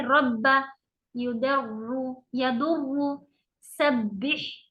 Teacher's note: पहला साकिन दूसरा मुतहर्रिक, और ये एक तरह की सख्ती के साथ पढ़ा जाता है। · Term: शद्दा